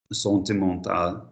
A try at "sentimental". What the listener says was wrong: Pause. Where is your letter I? Where's that vibration? The letter I is between the eyes. Yeah, unless it's got an N after it.